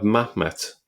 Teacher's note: here we see that the het has been dropped along the lines of the Samaritan pronunciation